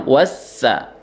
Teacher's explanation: sinnya ditekan karena ada tasydid ya. Teorinya setiap huruf yang bertasydid itu harus dinabroh atau ditekan ya.